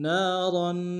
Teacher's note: نون کے الف مدہ ہے، را کو تنوین غنہ کریں گے۔